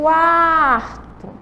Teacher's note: A gente quase não percebe o som do U · Então, aí a gente tem o som do A sobressaindo. O A é uma vogal e o U, ele é uma semivogal com um sonzinho mais fraco